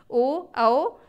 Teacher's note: ओ का उच्चारण स्थान होता है कंठ और ओष्ठ दोनों मिलाकर। ओ, औ ये दोनों का ही उच्चारण स्थान कंठ और ओष्ठ होता है।